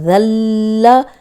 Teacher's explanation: اوپر سامنے کے جو دو دانت ہیں ان کے کنارے پہ لگائیں گے تو تب یہ نکلے گا ذل، ورنہ ذل یہ ساؤنڈ آئے گی. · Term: ذال